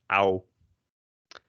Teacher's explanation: the same as english o w how but then a bit shorter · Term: au